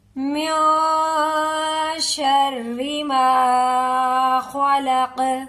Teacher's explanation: ٹھیک ہے، قل اعوذ برب الفلق من شر ما خلق. دیکھیں من کی نون پر اخفا ہوگا، یعنی کہ ناک میں چھپاتے ہوئے ہم گناہ کریں گے، ناک میں آواز کو روک کے رکھیں گے